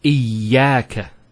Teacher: Notice the ya gets a double vowel because of the Shaddah there. Iyaka. It's not iyaka, iyaka.